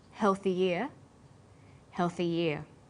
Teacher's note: When healthy is linked together with ear, a y sound is added. So, healthy ear and healthy ear have the same pronunciation, shown phonetically like this: healthy ear, healthy ear.